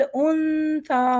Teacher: नून पर वज़न देंगे, सा की ज़बान बनाएंगे और नून को गुन्ना करके सा को पढ़ेंगे